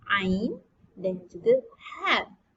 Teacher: Huruf yang berada di tengah-tengah kerongkong adalah huruf ain dan juga ha.